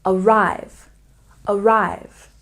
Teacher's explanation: Arrive has stress on the second syllable.